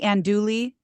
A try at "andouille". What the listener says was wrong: It's not a hard L. No, andouille. I'll teach you how to speak French, baby.